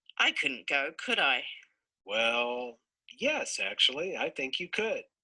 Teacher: there's a Concord Break um as he shifts up in key from where the initial person was